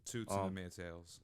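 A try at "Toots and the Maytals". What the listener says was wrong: Maytals. Maytals. I say Maytals. There's no E in there. There's no E. It's Maytals. No Maytails.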